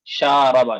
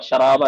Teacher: آپ نے شین کو جو ہے جلدی پڑھ دیا اور را کو کھینچ دیا